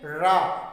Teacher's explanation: जब हम रा का उच्चारण करते हैं तो जीभ जो है हमारी उच्चारण करते समय तालु से लुढ़क कर स्पर्श करेगी। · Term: लुंठित